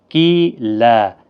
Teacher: کی یا مدہ ہے، ایک الف کی مقدار کے برابر کھینچ کر پڑھیں گے، اور دو زبر کو بدل کر ایک زبر کے ساتھ وقف کریں گے، لا بنے گا، ایک الف کی مقدار کے برابر کھینچ کر وقف کریں گے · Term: وقف بالابدال